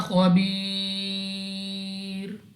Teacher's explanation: یا ساکن سے پہلے زیر یا مدہ مگر جب وقف میں را کو ساکن کریں گے تو یہاں پر ہمارے پاس مد عارض ہوگی جس کی وجہ سے ہم نے اس کو 3 4 یا 5 سیکنڈ تک کھینچ کر پڑھنا ہوگا.